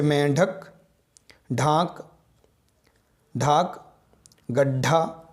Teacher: अंदर से आती हुई वायु को जीभ की नोक से मूर्धा को स्पर्श करते हुए होता है। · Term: मूर्धन्य ध्वनि